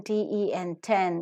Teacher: the tip of the tongue touches the alveolar Ridge or the teeth Ridge plosive because the oral cavity is blocked the air is held